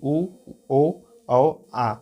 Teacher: जिस वर्णों के बोलने से हमारा मुख गोल हो जाता है उसे बोलते हैं वृत्त मुखी